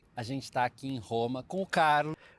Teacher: he's pronouncing the R as an H, as an aspiration.